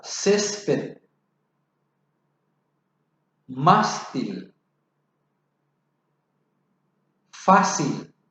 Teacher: Son las que llevan la fuerza de la voz en la penúltima sílaba. Llevan acento gráfico cuando terminan en consonantes que no sean N o S y en vocales. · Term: llanas o graves